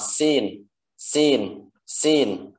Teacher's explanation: Huruf sin makhrajnya dari ujung lidah dan di antara gigi seri atas dan bawah